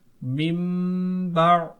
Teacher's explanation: اب ہم اس میم کو پروناؤنس کریں گے اس نون کی جگہ، نون کو ہم نہیں پڑھیں گے بلکہ نون کو میم سے بدل دیں گے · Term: اقلاب